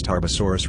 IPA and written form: ˌtɑːrbəˈsɔːrəs (Tarbosaurus)